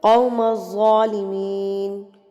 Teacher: قاف اور ظا دونوں جو ہیں حروف مستعلیہ میں سے ہیں، موٹے حروف میں سے ہیں، تو آپ نے اس کو ہیوی کر کے پڑھنا ہوتا ہے